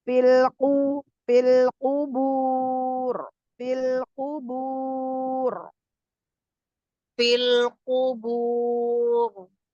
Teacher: Punya kofnya tebal tapi baknya tipis.